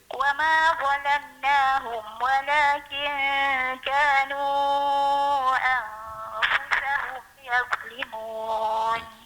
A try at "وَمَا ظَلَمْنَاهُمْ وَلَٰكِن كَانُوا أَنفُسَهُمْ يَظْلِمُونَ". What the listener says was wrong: Yaz tu tebal sikit. Yaz. Wa ma dha sama huruf dha yang kita sebut tu yazlimun.